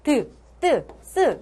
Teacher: 윗잇몸과 혀끝이 만나서 스 이런 것들 하면 어때? 혀끝이 윗잇몸을 치면서 소리가 난다.